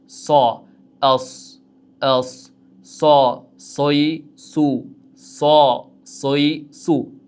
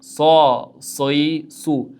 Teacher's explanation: So deganimizda og'izlar to'laqonli ochiladi. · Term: sod harfi